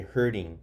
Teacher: The T kind of becomes a little silent, so we say hurting.